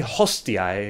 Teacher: Looks like the Pompeii bros weren't the only ones dropping their H's.